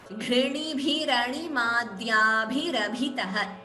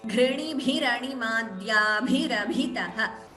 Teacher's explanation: Ikara is repeating, and there are 4 Mahapranas.